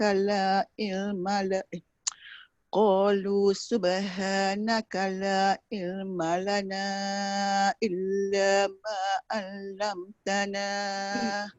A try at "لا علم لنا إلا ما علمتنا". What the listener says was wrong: yang kalimah yang ada ain tu masukkan sikit lagi dekat ain. La ilma lana illa ma 'allamtana.